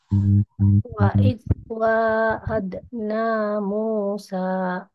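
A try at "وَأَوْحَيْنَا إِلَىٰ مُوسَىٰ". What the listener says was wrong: Mantap. Sip.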